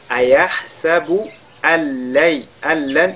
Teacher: Ayahsabu al-lan, ici nous sakin est suivi de la lettre lam. On fusionne donc ce nun dans la lettre lam, on fait idgham bila ghunna.